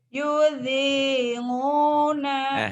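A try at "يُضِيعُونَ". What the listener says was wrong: Jawanya keluar yudinguna we. Yudingu. Jangan yudingu. Yudhi'una.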